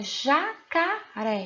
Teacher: Ré, a sílaba tônica é a última. Então, se a sílaba tônica é a última, a sua classificação será oxítona.